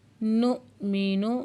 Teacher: حمزہ ساکن پہ جھٹکا لگا کے پڑھیں گے